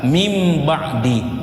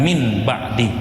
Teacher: Jika nun sakinah bertemu dengan ba, seolah-olah ada bunyi mim di sana.